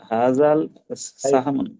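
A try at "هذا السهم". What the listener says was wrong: হাযাল সাহম, হাযা আলিফ লাম সাইলেন্ট হবে, হাযা সাহম, হাযা সাহম, হাযা সাহম, হাযা সাহম। কয়েকবার বলি, হাযা সাহম।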